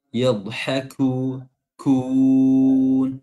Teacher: huruf kaf mengandung hams ya, walaupun dia huruf syiddah, huruf yang di suara tertahan ketika khususnya ketika sukun, tapi syiddah hamsnya harus tetap keluar ya.